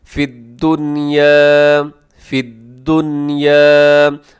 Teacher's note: بعض کیا کرتے ہیں کہ فی الدنیا ایسے آواز کو ناک میں لے جاتے ہیں، نون کی آواز کو، تو یہ درست نہیں ہے۔ ظاہر کر کے پڑھیے گا فی الدنیا، فی الدنیا، اور آگے جیم جو ہے رموز اوقاف میں سے وقف جائز کی علامت ہے، اب یہاں سانس توڑ سکتے ہیں۔ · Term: اظہار